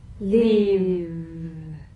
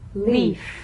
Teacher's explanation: One has vocal cord vibration, the other is unvoiced. · If you don't have enough vibration in your V's, they'll end up sounding like the F because they're exactly the same.